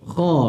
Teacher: Kha dibaca tebal, jangan muncung mulut. Kha, bukan kha, bukan khe, bukan khe. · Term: huruf kha